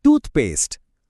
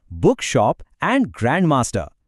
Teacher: the stress falls on the first part, the first syllable of the first word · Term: Compound words